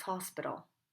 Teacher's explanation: we Mark the letter P by closing our lips but we don't puff or pop open